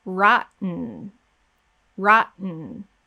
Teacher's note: we're going to focus on the n at the end and i want you to listen and hear that there's no vowel sound going into the n my voice is actually not going to start up again after · down so you can see that there's no vowel um so my tongue is up on the roof of the mouth i'm not saying with a vowel there's no vowel we go straight into the n · My voice is actually not going to start up again after the T until I am producing the N. So once my tongue is up on the roof of my mouth and I'm ready to go to produce the N, then I start my voice. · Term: syllabic N